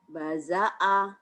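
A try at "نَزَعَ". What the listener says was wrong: Terbalik titiknya di atas.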